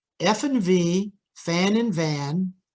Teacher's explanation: going to stop the air we're going to squeeze the air we're going to squeeze it down so narrowly that there's actually friction or noise that's created hence the name fricative and this noise can easily be heard